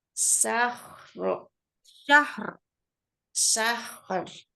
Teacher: Ini ro-nya belum kedengeran juga. Syahrin harus kedengeran takrirnya. · Lalu ro-nya sukun karena wakof. Berarti tebel ro-nya.